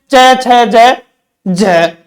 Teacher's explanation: 2 उच्चारण अवयव स्पर्श करते हैं लेकिन उच्चारण करते ही अलग हो जाते हैं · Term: स्पर्श संघर्षी